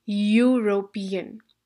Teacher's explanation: Now European begins with E, but do you get the sound of E or do you get the sound of Y? You get the sound of a Y, European. So this is not a vowel sound.